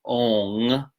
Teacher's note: It's just not exactly O-N-G, because that involves a little bit more constriction in the back of the throat than we do in Uccāra practice.